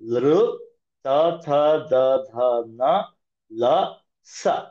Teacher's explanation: ನಾಲ್ಗೆ ಹೋಗಿ ಹಲ್ಲನ್ನ, ದಂತಾಹ ಅಂದ್ರೆ ಟೀತ್, ಟಚ್ ಮಾಡ್ತಾ ಇರುತ್ತೆ. ಹಾಗಾಗಿ ಇವುಗಳ ಉಚ್ಚಾರಣಾ ಸ್ಥಾನ ಅಂದ್ರೆ ಹುಟ್ಟುವ ಜಾಗ ದಂತಾಹ, ಟೀತ್.